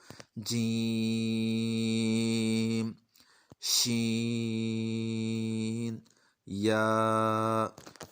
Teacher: ये दोनों एक ही जगह से अदा होते हैं, ज़बान का दरमियान और ऊपर तालु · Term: जीम, शीन और या